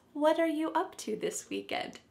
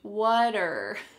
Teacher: the word, what and are, are creating a spoken contraction